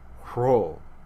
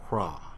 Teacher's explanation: initial rows were also aspirated. That is, they had this rough breath put on the front of them.